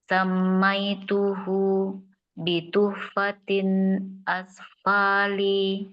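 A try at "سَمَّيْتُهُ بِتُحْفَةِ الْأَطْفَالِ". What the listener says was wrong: Oke, ada alif lamnya. Samaituhu bituhfatil atfali.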